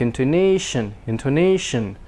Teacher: intonation the tone is a little longer a minor stress and the a is much longer than the others and the shun is very short